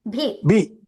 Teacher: భీ అని దీర్ఘం తీస్తున్నాం మరి దీర్ఘం తీయకుండా చెప్పండి భి భి అది అది లఘు లఘు అలా ఉంటే దాన్ని హ్రస్వం అంటాం